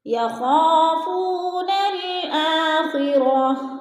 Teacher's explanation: ہم نے نون کو لام کے ساتھ ملا کر پڑھنا ہے، یعنی الف کو نہیں پڑھنا۔ الف لکھنے میں آتی ہے اور پڑھنے میں نہیں آتی۔